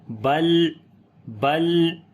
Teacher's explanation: پڑھیں گے، لام کو لمبا کریں گے، الف مدہ ہے، بل، لام کے اوپر صفت توسط کریں گے، نہ ہی آواز کو جو ہے وہ بہت زیادہ جاری کریں گے اور نہ ہی ایک دم بند کر دیں گے ، بلکہ درمیانی پوزیشن ہوگی، بل، بل، ٹھیک ہے، تکذبون، زال